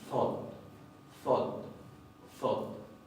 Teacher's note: El asunto es que esta RN, ya vamos a ver cuando veamos más en detalle la parte de fonología, esa RN no se pronuncia ya como RN en islandés. Se pronuncia como una D oclusiva ensordecida, casi como si fuera una T.